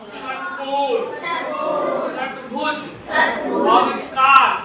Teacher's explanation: जीभ किस पे जा रहा है? हमारे मूर्धा के ऊपर जा रहा है। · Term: मूर्धन्य